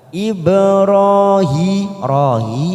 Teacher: huruf ba sukun warna biru namanya Qolqolah Sugro kita pantulkan ibrahi Rahi masing-masing dua harakat kita panjangkan fathah berdiri pasrah berdiri · huruf ba sukun warna biru namanya qalqalah sugro, kita pantulkan